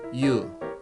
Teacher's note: This diphthong sounds like U, like English word Y-O-U, U. It starts from unclear Y sound, glide Y